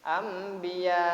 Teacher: Biaknya baca mad wajib mutasil, ya. Mad wajib mutasil ini panjangnya 6 harokat, ya, atau sama dengan 3 alif.